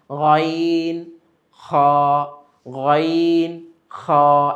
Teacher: একটা কম্পন সৃষ্টি হয় হলকের মধ্যে। · ৩ নম্বর মাখরাজ হলকের শেষ হইতে উচ্চারিত হয় গাইন খা। তো এখানে অতটা চাপ লাগে না, কিন্তু আওয়াজের প্রকম্পন, আওয়াজের যে একটা ধ্বনি আমরা বের করি সেটা কিন্তু হলকের শেষ থেকে আসে।